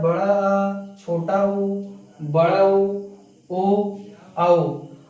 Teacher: पश्च स्वर में हमारी जीभ एकदम पीछे की तरफ लगती है